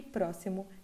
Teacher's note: próximo x com som de s